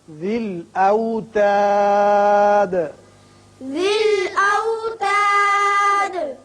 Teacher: یہاں جب ہم نے وقف کیا تو دال ساکن ہو گئی اور اس کی صفت قلقلہ ادا کی